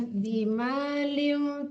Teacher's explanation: Bima lium itu dengung ya. Bima lium tanwin ketemu fa itu nama hukumnya ikhfa hakiki didengungkan